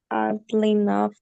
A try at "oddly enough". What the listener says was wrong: But just in mind that you're saying ugly, but instead of ugly, you're saying oddly with a D. Oddly. Oddly enough.